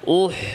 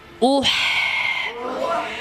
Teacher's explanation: হামজাতে দম্মা এখানে ঠোঁটকে গোল করতে হবে দম করতে হবে উতে সুকুন হাতেও ঠোঁট গোল থাকবে না স্বাভাবিক হয়ে যাবে